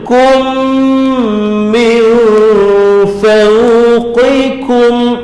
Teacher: Min, nun hilang tanda mati sebab jumpa fa. Fa huruf ikhfa hakiki, jadi standby nak sebut huruf fa pada nun tu, dengungnya tu standby nak sebut fa.